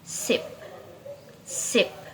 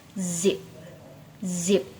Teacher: For s and z. S is voiceless alveolar fricative, while z is voiced alveolar fricative. Both are alveolar fricative made by air pacing the tongue and upper teeth.